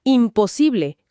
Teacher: Ahí evoluciona a imposible con M, porque los labios ya se están juntando para la P de posible. Claro, hacer una N abierta y luego cerrar para la P es cansadísimo.